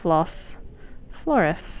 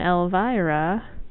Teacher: Or it's also why, this is my favorite example in English, Elvis is a male name, and Elvira is the female name. Because S's that are word final can be S, but when they're surrounded by two vowels, they become an R. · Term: rhoticism